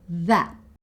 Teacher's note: And that. Again, she stops herself just before she makes the T sound at the end of that.